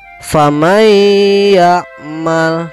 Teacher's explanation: dimasukkannya nun mati masuk ke dalam huruf ya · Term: Idgham Bighunnah